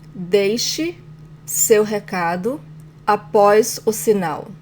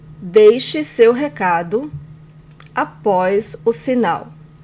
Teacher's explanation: In the commands form, the stronger syllable is the second to last syllable, just like in the present tense.